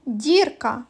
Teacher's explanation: у слові дірка звук і пом'якшує звук д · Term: м'який